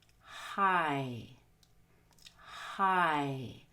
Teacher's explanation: at the long I which is a low high front vowel it consists of two different parts it starts with the short oh ah and ends with the long e